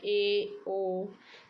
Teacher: अर्धसंवृत जिन स्वरों के उच्चारण मुख द्वार आधा बंद